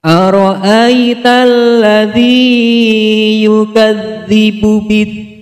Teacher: mad lin, karena huruf ya sukun didahului oleh huruf yang berharokat fathah. Cara membacanya dibaca panjang 2 harokat.